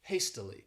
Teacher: This word has 3 syllables and the stress is on that first syllable